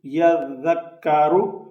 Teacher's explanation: اس زال کے اوپر خیال رکھنا ہے کہ یہاں سیٹی کی آواز نہیں ہونی چاہیے